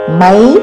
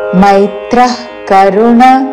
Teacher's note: మేత్ర కాదు మై ఐత్వముతో మైత్రః కరుణ విసర్గ తర్వాత క తో పదము మొదలవుతున్నది కాబట్టి నాಭಿണ്ട് శ్వాస వదిలి